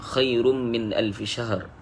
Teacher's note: Khairun ada mim tadi, tanwin bertemu mim ni jadi idgham ma'al gunnah, kena ada gunnah, ada dengung. Khairum min alfi syahr, perlu masukkan tanwin tadi ke dalam mim.